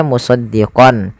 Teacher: kita hanya memasukkan saja tanwinnya kepada huruf lam dan tidak ditahan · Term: Idam bila gunah